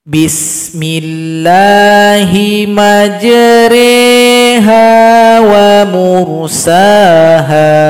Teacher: Imala itu artinya memerengkan bacaan. Jadi bunyi ra diganti menjadi e, re dipanjangkan 2 ketukan.